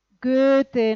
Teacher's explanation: boca en posición de O, pero pronunciamos una E